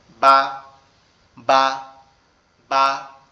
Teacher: এই বাটা হচ্ছে আমাদের দুই ঠোঁটের মধ্যবর্তী স্থান থেকে উচ্চারিত হবে